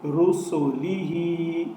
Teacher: بعض لوگ یہ غلطی کرتے ہیں کہ یہاں سین کو لمبا کر دیتے ہیں، یہاں سین کو لمبا نہیں ہونے دینا۔ را زبر را سین پیش واو سو رسو لام زیر لی رسولی۔